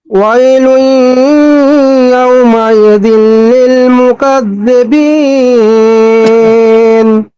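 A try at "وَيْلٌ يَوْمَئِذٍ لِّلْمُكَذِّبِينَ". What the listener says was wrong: জি মাশাআল্লাহ।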